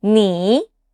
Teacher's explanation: The third tone is a bit of roller coaster. Your voice starts in the middle, dips down, then comes back up again.